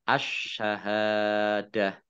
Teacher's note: sinnya ada tasdidnyanya dibaca dobel ha fathah Alif Mad thii kemudian ta marbut fathah karena wakaf dibaca ha Sukun